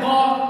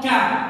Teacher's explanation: Apa yang bedakan? Pertama, dia sama-sama di pangkal lidah